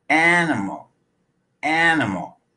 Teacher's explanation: the first syllable is stressed but the second and third syllables are reduced to up even though they're spelled with an i and an a animal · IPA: /ǝ/